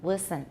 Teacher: my big difference is I do have alveolar contact for a pre-vocalic l · you can hear how dark my L's are